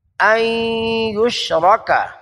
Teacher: ان یشرک، این نون مشدد، نون کو یا کے ساتھ ملایا، ادغام کیا، یشرک غیر مدہ، جلدی سے لمبا نہیں کرنا۔